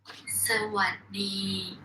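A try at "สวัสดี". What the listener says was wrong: Sawatdee. Sawatdee. Yeah, but you hear how that middle one goes down?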